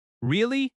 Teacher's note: Notice the rising tone at the end. Your voice goes up. That rising tone shows interest.